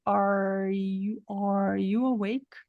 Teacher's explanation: esse R não é o r que foi reduzido do T tá esse R é o r verdadeiro · quando a gente escreve com r a gente enrola a língua para trás